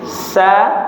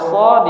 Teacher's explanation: Contoh misalkan huruf sin dengan shad, itu semua sifatnya sama kecuali satu ya. Kalau sin dia istifal tipis, sa kalau so dia isti'la ya, tebal, lidahnya naik